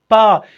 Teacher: when I produce the sound बा, there is collision between my lips